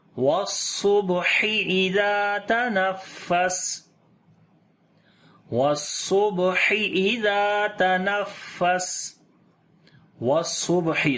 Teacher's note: صاد کو موٹا پڑھیں گے اور صفت صفیر اور صفت ہمس یہاں پر بھی آ جائیں گی، با کے اوپر قلقلہ کریں گے یعنی کہ کمزور قلقلہ ہوگا، ہا کو گلے کے درمیان والے حصے سے پڑھیں گے۔